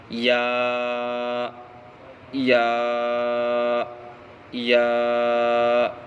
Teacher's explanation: یا مدہ کا مخرج جوف دہن یعنی منہ کا خلا